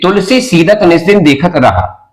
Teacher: ये त स न द ये दंत्य वर्ण है, सारे के सारे दंत्य वर्ण है।